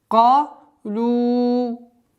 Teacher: Здесь у нас долгота в размере четырехогласовок, удлиняем дамму.